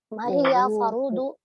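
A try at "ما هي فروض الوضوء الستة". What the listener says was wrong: Ibu yakin fa-nya dibaca fathah?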